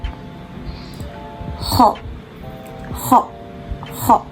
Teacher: dibaca dengan pangkal lidah yang menyentuh langit-langit kita sambil bergetar.